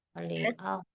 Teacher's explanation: Tetapi huruf shadnya kan tebal maka hamzahnya memang mengikut tebal.